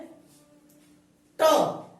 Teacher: हमारे जीभ का जो अगला वाला हिस्सा है वो लगता है ऊपर गड्ढे में, यानी तालू से और ऊपर। इसे बोलते हैं मूर्धन्य।